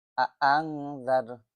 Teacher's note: এখানে আং গুন্না হবে, ইখফা গুন্না, নুন সাকিনের পরে জাল আসছে।